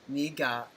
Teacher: He says it fast. The accent goes down on the first syllable and then it's a flat tone on the second.